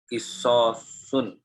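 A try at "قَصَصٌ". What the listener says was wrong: Bukan kisos, tapi kososun. Yang benar kopnya fathah.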